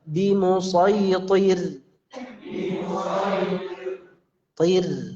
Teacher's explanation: Nah, huruf tebal sebelum ra sukun ini tidak mempengaruhi pengucapan ra-nya yang tipis. Yang mempengaruhi tipisnya pengucapan ra ini adalah kasrah. Kasrah sebelumnya.